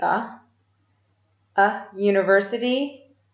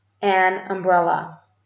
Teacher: University begins with the consonant sound y, but umbrella begins with a vowel sound. We use a or an depending on the sound of the word, not the spelling.